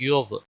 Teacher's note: غین پہ قلقلہ نہیں ہونا چاہیے